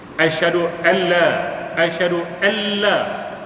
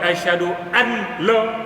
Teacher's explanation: nun tak boleh diizhar. Tak boleh baca an la, kena baca alla, masuk terus dalam la. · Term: idgham bila ghunnah